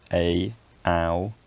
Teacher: You can have raising diphthongs which go from lower to higher